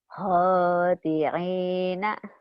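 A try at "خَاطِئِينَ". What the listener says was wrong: Bukan ain ya. Hamzah. Hamzah. Khoti'ina.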